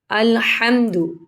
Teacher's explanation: ہا کو حلق سے ادا کریں گے